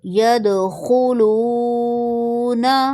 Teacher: دال پر کلکلہ کریں گے، خا کو موٹا پڑھیں گے اور واو کو 1 یا 2 سیکنڈ کے لیے کھینچیں گے